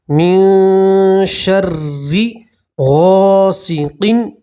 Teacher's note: ان 15 حروف میں سے نون ساکن کے بعد شین آ رہا ہے تو نون ساکن کی آواز کو آپ ناک میں چھپائیں گے اور گننا کے ساتھ پڑھیں گے۔ من شر، را کے نیچے زیر ہے تو را کو باریک پڑھیں گے